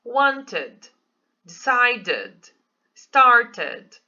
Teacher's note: Então, aqui realmente tem o som do I, tá? Que é o som do E, né? Que fica id.